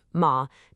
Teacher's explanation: the fourth tone, ma, takes this dramatic dive from five all the way down to one